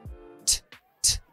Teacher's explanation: tenemos que desactivar la voz cuando pronunciamos la T en inglés